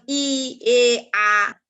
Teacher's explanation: জিভের সামনের অংশের সাহায্যে উচ্চারিত এই স্বরধ্বনিগুলো হলো সম্মুখ স্বরধ্বনি